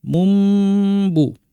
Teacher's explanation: আমরা পড়ব মুম্বু আর এই মুম বলার সময় গুন্নাটাকে একটু লম্বা করে দিব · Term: ইকলাব